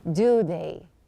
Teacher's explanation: Here you can see that I lowered the intonation. So there is a difference between saying do they or do they.